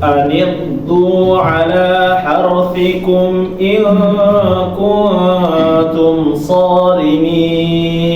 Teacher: Perhatikan huruf ghain jangan sampai dipantul ya Bapak, karena huruf ghain bukan termasuk huruf qalqalah.